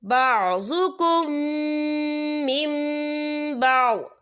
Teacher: یا دیکھیں بعضکم، یہاں میم ساکن ہے، میم ساکن کے بعد جو ہے میم مشدد والا حروف آ رہا ہے، تو یہاں پر ادغام شفیع ہوگا، ہم پچھلے میم کو اگلے میم میں مدغم کریں گے، اور ہم یہاں غنہ بھی کریں گے. اور آگے دیکھیں من بعض، یہاں نون ساکن ہے، نون ساکن کے بعد جو ہے با آ رہا ہے، تو یہاں پر اقلاب ہوگا، یعنی تبدیلی ہوگی، ہم پچھلے میم کو اگلے میم کے ساتھ ملا کر پڑھیں گے، اور ہم یہاں غنہ بھی کریں گے.